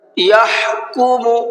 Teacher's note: حا کو حلق سے نکال کر کے پڑھنا ہے